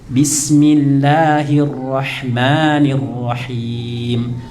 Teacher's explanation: Mat tabi itu 2 harokat. Jadi kadarnya jangan kepanjangan.